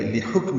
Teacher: لحکم لام کو جلدی پڑھیں گے، کاف ساکن پہ ہمس ہوگا. میم کی زیر کو معروف طریقے سے جلدی ادا کریں گے.